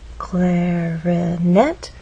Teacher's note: clarinet has three syllables clarinet but it's the final syllable that is stressed and there's a pause right after which means there's